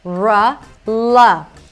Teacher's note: For the L, the tongue touches the upper palate